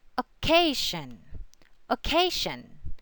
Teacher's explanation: the accent always falls before the SH or ZH sound